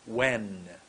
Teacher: My tongue went behind my top teeth.